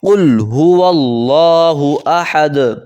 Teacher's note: آخر میں دال آ گئی ہے، حروف قلقلہ میں سے ہے دال، قطوب جد، یہ حروف قلقلہ میں سے ہے، اس پہ قلقلہ کریں گے، احد، اس طرح کر کے، قل هو اللہ احد، قل هو اللہ احد۔ ہا کو حلق سے ادا کریں گے